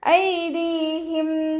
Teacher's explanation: ഐദീഹിം ദാലിൻ്റെ കൂടെ യാമദ് വന്നിട്ടുണ്ട്, 2 കൗണ്ട് നീട്ടിക്കൊടുക്കുക